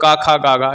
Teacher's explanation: तो क ख ग ये सारे स्पर्श व्यंजन है। कंठ ध्वनि भी है।